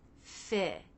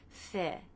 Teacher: the tongue tip stays down while the front part of the tongue stretches up and forward towards the front part of the roof of the mouth. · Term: I as in sit